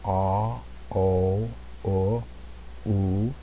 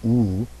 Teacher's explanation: my jaw progressively comes up as my lips get rounder that's one of the characteristics of these of these round vowels